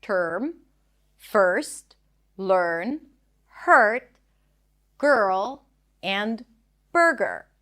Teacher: you want to think of it as if the R takes over the vowel before and you just transition from one consonant to another while rounding your lips and stretching out the sound. The stir always appears in a stressed syllable. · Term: stir sound